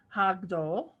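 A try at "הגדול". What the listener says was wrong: Hagadol. Put the vowel under the gimel.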